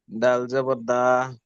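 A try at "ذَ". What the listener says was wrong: এটা যদি দাল হয়, এটা যদি দাল হয় তাহলে এটা কি?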